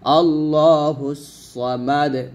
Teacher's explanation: দালটা সাকিন হয়ে যাবে, সামাদ, এবং কলকলা করতে হবে যেহেতু দাল কলকলার হরফ